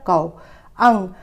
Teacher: आओ की मात्रा का उच्चारण थोड़ा सा लंबा खींच कर किया जाता है